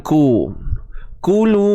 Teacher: Kulu, satu harakat saja, dan muncung bibir sebab dia baris depan.